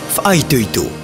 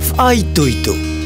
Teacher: Une glottale, fa'a, accentuée.